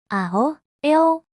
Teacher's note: A and the o. You start with an open a sound and glide smoothly into an o sound.